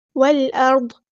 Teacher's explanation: والعرض نہیں ہے، ٹھیک ہے، نہ ہی حمزہ قطعی میں عین کی آواز آئے گی، را بس پور پڑھیں گے، والارض، ضاد کو ہم ہیوی ادا کریں گے اور ضاد کو ہم ساکن کر دیں گے وقف کرتے ہوئے